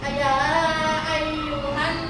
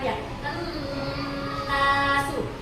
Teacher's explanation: Wajibul gunna itu nunnya berjumpa dengan tasdid, dibaca berdengung.